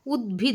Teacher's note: ত গুলো দ হয়ে যাচ্ছে তাহলে এখানেও কিন্তু ঘোষীভবন হচ্ছে অর্থাৎ ত হচ্ছে অঘোষ বর্ণ দ হচ্ছে ঘোষবর্ণ